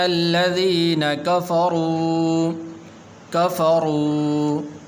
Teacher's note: را کو پر بھی کرنا ہے اور واو مدہ ہے، اسی لمبا بھی کرنا ہے